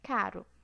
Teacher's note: no dialeto paulistano a gente usa o r fraco